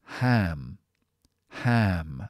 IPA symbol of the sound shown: æ